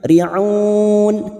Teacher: karena kita memilih wakaf di sini maka riun kita panjangkan empat harakat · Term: Mad Arid